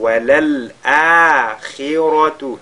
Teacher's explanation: Akhira, vous voyez la position du Hamza qui est suivi par un alif al-mad. Et ici on fait maddul badal